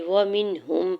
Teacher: ہا کی پیش کو میم مشدد کے ساتھ ملاتے ہوئے جو ہے وہ غنہ کریں گے